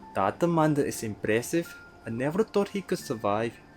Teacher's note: So for the phrases, that man is impressive, THAT, they will tend to say as D